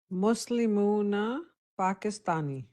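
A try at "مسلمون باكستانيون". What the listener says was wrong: پاکستان، یا عربی میں پاک نہیں، پے کا لفظ نہیں ہوتا ہے، تو اس کو عربی میں پے کا حرف نہیں ہے، معلوم ہے نا آپ کو؟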